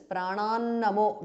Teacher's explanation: Pranan namaha becomes namo because of sandhi